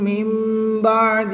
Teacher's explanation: نون ساکن کے بعد حرف با ہے تو یہاں پر اقلاب ہوگا، نون ساکن کو میم سے بدل کر غنہ زمانی کر کے پڑھیں گے